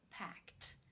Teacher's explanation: When you add the ed, it becomes packed because the k sound is unvoiced.